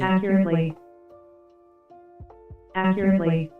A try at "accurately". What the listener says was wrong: Она Т не читает. Accurately. Accurately.